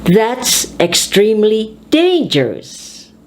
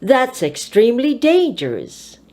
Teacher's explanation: So put your voice high on the adjective.